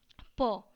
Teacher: हमारे दोनों ओठ जो हैं वो आपस में टकरा रहे हैं